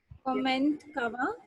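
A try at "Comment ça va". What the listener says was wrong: So I have already told you T is silent. So we do not need to pronounce T. So this will become como. Como. Como Sava. This is como Sava. Como Sava. como Sava. Como Sava.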